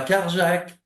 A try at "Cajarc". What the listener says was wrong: À Cajar, Cajar, Cajar, on Prononce pas le C final, ça s'écrit Cajarc, mais ça se prononce Cajar.